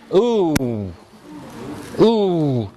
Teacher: your lips round as you pronounce the vowel ooh